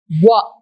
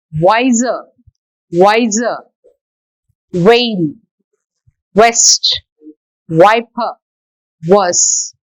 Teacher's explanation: While we pronounce this sound, wa, our lips are rounded. You see here, lips form a tight circle like the O.